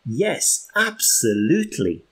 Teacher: And I went up to show some enthusiasm. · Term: intonation